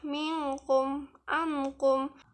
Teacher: Nun mati atau tanwin berbunyi condong ke makhraj huruf kaf, yaitu condong ke sedikit di muka pangkal lidah dengan langit-langit mulut, sehingga berbunyi jadi ong.